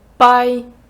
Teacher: Чи чули Ми там аспірацію не чули да це наша звичайна б